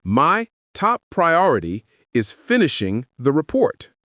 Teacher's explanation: try a falling tone. It shows confidence and finality.